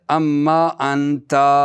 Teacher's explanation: اور ان کی نون ما کی میم میں ادغام ہو گئی